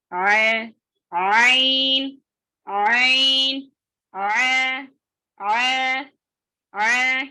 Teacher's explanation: आइन की आवाज नर्म और बगैर झटके के होती है